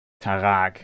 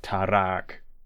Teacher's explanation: the dwarves at some point started to pronounce the R like the German throat R, instead of a trilled R